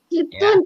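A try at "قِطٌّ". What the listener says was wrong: tak. Pakai to, toto, soto. Soto. Bu, beli tomat, abang beli tomat pakai to itu ya, bukan pakai tak.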